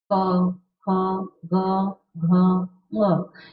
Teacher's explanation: इन सब का उच्चारण कहाँ से हो रहा है, कंठ से, इसलिए इसे हम क्या कहेंगे, कंठ्य।